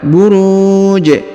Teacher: huruf Ji disukunkan atau dimatikan sehingga dibaca pantul atau disebut dibaca Qalqalah